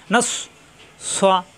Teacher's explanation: সিন না কিন্তু সৎ, জিব্বা নিচে তাতে চাপ দিয়ে